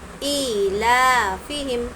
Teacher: ایلافہم، ای اور لا کو کھینچیں گے، کھڑا زبر ہے اس لیے، کھڑا زبر اور کھڑا زیر ہے اس لیے ایک الف کی مقدار ہم کھینچیں گے۔ اب یہاں پر دیکھیں گے آگے میم ساکن ہے۔